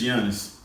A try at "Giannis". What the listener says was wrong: You didn't even say his name right, bro. Giannis. G is silent.